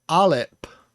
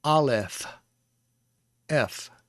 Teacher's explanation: is the plosive sound so that word would be alep but without the plosive sound without the dagesh in the center it is the fricative sound